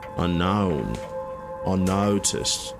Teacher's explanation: the O sound, the OU diphthong becomes an ow